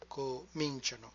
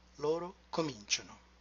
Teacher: Cominciamo, and we finish with cominciate, and finally cominciano with the retracted stress, cominciano. Loro always retract the stress by one syllable.